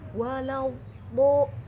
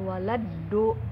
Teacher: Lidahnya miring dulu ya teman-teman ya. Itu dia sifat istitola.